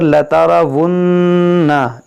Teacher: नून मुसद्दद हो या मीम मुसद्दद हो, हमेशा गुन्ना होगा